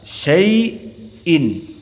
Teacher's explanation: dibaca oleh jumhur semua dalam keadaan syai'in, dalam keadaan 2 harokat saja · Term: Madlin